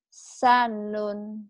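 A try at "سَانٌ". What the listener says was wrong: Sanya panjang.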